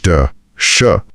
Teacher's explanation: जीभ मुड़कर मुंह की छत यानी मूर्धा को छूती है और श का उच्चारण भी वहीं से होता है। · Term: मूर्धन्य ध्वनियां